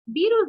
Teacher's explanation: Virus lleva la mayor fuerza de voz en vi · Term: grave